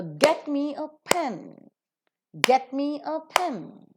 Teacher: get being a verb and pen being a noun are accented. The rest are reduced to their weak forms.